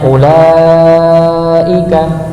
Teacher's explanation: lamnya dipanjangkan 4 atau sampai 5 harakat. Sedangkan hamzah, pada lafaz u maka dibaca pendek.